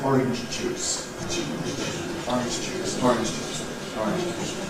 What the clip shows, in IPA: ˈɒrɪnʤ ʤuːs